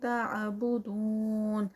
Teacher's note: تعبدون 4 کاؤنٹس کا اسٹریچ، واو مد